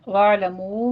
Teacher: عین کے اوپر آپ نے جھٹکا نہیں دینا، اس کو بس وسط حلق سے ادا کرنا ہے